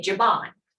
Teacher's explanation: it's common in Mvskoke that last E drops and we say Jiban